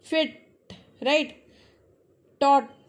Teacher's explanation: जब लास्ट में टी आता है तो हमारी जो टिप ऑफ टंग है इट touches टू roof but in the front part